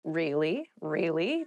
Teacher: you can use it to show you're interested in a conversation with upward intonation